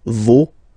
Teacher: even if you've got this final s, you don't pronounce it